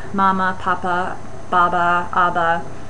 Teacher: Interestingly, the very, very first babbled sounds tend to be P, B, and M. Those are all bilabial sounds